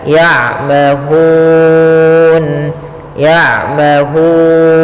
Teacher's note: ada mim matinya bertemu dengan huruf ya maka suara mimnya harus jelas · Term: izhar syafawi